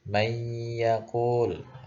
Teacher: Jadi misalnya nun mati bertemu dengan huruf ya, maka nunnya itu melebur tapi langsung ke ya dan ditahan 2 harokat sampai terasa bergetar di hidung. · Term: idgham biguna